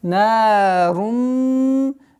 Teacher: Здесь полноценная ассимиляция с полноценной назализацией в размере 2 огласовок. Идгам. Гунна камиля.